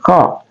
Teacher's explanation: Kemudian ada qa, adalah huruf aqsal lisan. Huruf aqsal lisan, dia adalah huruf keluar dari pangkal lidah kita. Jadi ingat, keluar dari pangkal lidah, jadi qa.